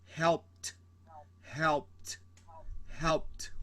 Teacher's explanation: Sometimes you have this d, but it sounds like a t, t, t, t, and still this e is not pronounced. It's very subtle.